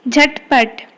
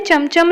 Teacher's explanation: चार वर्णों वाले शब्दों के दूसरी और अंतिम व्यंजन ध्वनि हलंत उच्चारित होती है